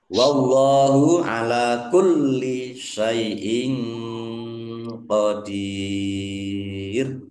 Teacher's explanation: Allahnya dibaca tebal karena harokat di depannya fathah. Lam fathah berdiri mad tabi'i.